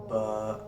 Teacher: हमारे यह बैरून तरी है यह अंदरूनी है बा जो है होठों की अंदरूनी तरी के मिलने से बा अदा होता है सिंपली होठ बंद करें बा ऐसे सिंपली खोल लेना बा अदा